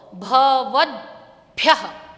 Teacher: भव के बाद द उच्चारण है, उसके बाद भ, उसके बाद य और बाद में आहा